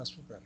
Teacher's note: En la palabra azúcar, la sílaba tónica está en la penúltima. Las sílabas átonas carecen de acento prosódico, de intensidad.